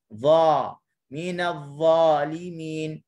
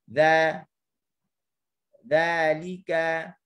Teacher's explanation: apabila pangkal lidah terangkat bagi huruf dha, tentunya menghasilkan huruf yang tebal, bunyi tebal